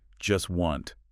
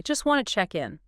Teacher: The source points out that in this particular utterance, the speaker doesn't pronounce the T sound in either word. Not in just and not in wanted. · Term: consonant reduction